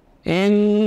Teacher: Nun huruf tawassut baina syiddah wa rakhawah. Keluar dari paduan ujung lidah dengan gusi atas serta khayshum. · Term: gunnah